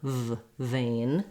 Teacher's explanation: It's just like the F sound with the voice on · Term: V sound